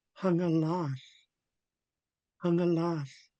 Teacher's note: It automatically darts up behind my upper front teeth whenever I have to do an HL blend.